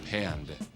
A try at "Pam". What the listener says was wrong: There's no D. It's Pam. P. M. Pam. No, there's just one.